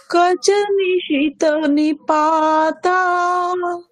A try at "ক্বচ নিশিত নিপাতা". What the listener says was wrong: আচ্ছা, ক নয় ক্ব, কয় ব আছে, তাহলে ক্ব।